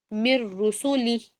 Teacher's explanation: نون drop کریں گے اور را کو پڑھیں گے